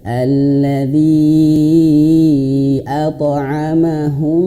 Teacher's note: Huruf to ini dia termasuk huruf sifat qalqalah, mantul. Kalau kita pahami kalau qalqalah itu dia mantul alto, pantulannya ke alto kalau dia tebal.